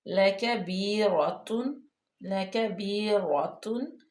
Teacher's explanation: اب یہ لَكَبِيرَةٌ میں صرف را جو ہے وہ پر پڑھیے، باقی سارے لفظ باریک ہیں اور ہونٹوں کو ایسے چوڑا کر کے پڑھا جاتا ہے ان کو.